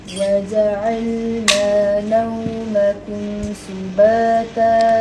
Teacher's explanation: Uj kena kurangkan angin. Sebab jim bukan huruf mahmusah.